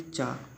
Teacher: तो चा बोलते हैं, तो चा तालू पर, ऊपर की ओर जो तालू है उस पे जीभ लगती है